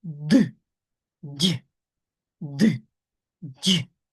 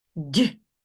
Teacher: Так, тому що для дь - це нормально бути м'яким, так як і твердим. І тому д язик твердий, напружений. Дь він стає м'яким і опускається вниз рота нашого